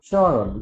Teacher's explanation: যখন ম ফলা থাকে কখনো তখন একটু চন্দ্রবিন্দু দিতে হয়, উচ্চারণ একটু যোগ করে বলতে হবে স্মরণ, মানে নাক দিয়ে উচ্চারণ হবে